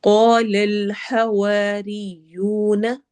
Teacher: कॉफ को मोटा पढ़ना है और अलिफ को भी साथ मोटा करना है।